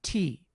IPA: ti